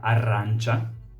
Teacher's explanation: Ha ancora alcuni problemi con le doppie, ha problemi a realizzare la R singola intervocalica